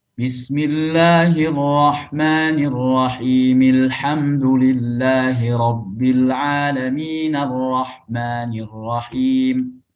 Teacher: Nah, kalau alhamdulillahi rabbil alamin, ini kita sambung dengan bismillah, maka hamzah wasal di a, alham itu tidak lagi kebaca